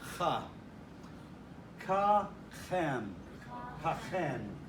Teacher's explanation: The kaf without the dagesh has some breath in it.